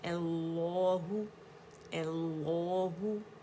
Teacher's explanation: हमज़ा मोटा नहीं करेंगे, हमज़ातुल वसल पे हमने फ़तहा डाल दी, ए हमज़ा फ़तहा ए हो गया, ये अल्लाहु, ठीक है।